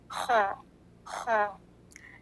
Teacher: ये हलक के इब्तिदाई हिस्से से अदा होता है। हलक का इब्तिदाई हिस्सा यानी हलक का वो हिस्सा जो मुंह के करीब तरीन है, the closest part of the throat.